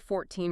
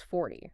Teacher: the only thing distinguishing those two is a subtle shift in stress and vowel length